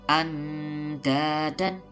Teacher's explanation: Nun mati bertemu huruf dal dibaca samar dan dengung. Bukan andadan, tapi ada samarnya. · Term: ikhfa